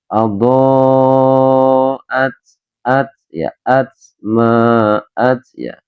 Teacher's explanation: ketika membaca huruf ta teman-teman ya, teman-teman harus mengeluarkan angin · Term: huruf hams